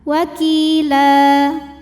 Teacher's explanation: jika berhenti hukumnya Mad iwad sebab ada baris tanwin fathah yang kita waakafkan cara bacanya panjang dua harakat